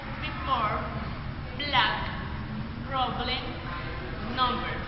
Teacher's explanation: The manner of articulation is plosive. The place of articulation is bilabial, is a voice.